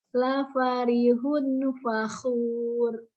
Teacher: Tanwin ketemu fa, ini ada dengung.